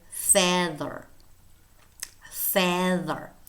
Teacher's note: a voiced inter dental fricative